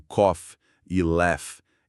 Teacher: Com o tempo, as pessoas foram suavizando. Em palavras como cough e laugh, esse arranhão veio para frente da boca e virou F. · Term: som de F